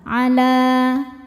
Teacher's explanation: Sebab ada alif. Alifnya alif bengkok. Didahului baris fathah. Cara bacanya panjang dua harakat. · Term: mad thobi'i